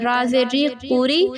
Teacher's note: را پہ جب زیر آئے گی وہ باریک پڑا جاتا ہے